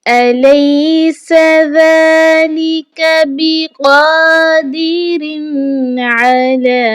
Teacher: تنوین کی آواز کو نہیں چھپانا بلکہ ہم نے کیا کرنا ہے، اظہار کرنا ہے · أَلَيْسَ ذَلِكَ بِقَادِرٍ عَلَىٰ، یہاں پر سین آ چکا ہے، سین جب ادا ہوتا ہے تو یہ سیٹی کی آواز دیتا ہے، ذال کو نہایت نرمی کے ساتھ پڑھا جاتا ہے، ڈھیلے منہ اور ڈھیلے ہونٹوں کے ساتھ اس کی ادائیگی ہوتی ہے، قاف کو بھی ایک الف کے برابر کھینچ کر پڑھا جائے گا اور موٹا پڑھا جائے گا۔